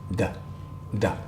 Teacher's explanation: let's practice with the letter D or da this is a dental